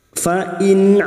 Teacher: nun sukun bertemu Ain dibaca jelas tanpa mendengung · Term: Idhar halq